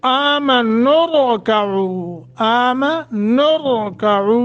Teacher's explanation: आमनुरकऊ, आमनुरकऊ, रा को मोटा करके पढ़ेंगे